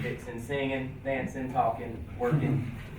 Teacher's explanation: Every time you have the ing, you take the G off, say fixing, singing, dancing, talking, working.